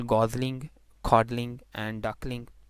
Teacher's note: Those words who are not ending at LE, in such words L would not be syllabic.